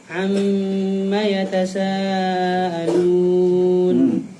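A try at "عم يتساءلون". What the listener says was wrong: Belum selesai itu. Yatasaalun. A-nya jelaskan. Tenang aja, bacanya yang jelas.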